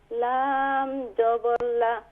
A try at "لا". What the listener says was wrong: لام کے ساتھ الف بھی ہے، لام الف زبر لا، لا، کیونکہ لام کے بعد جب الف ہوگا تو یہ الف مدہ ہے، اسے ایک الف کی مقدار کھینچیں گے،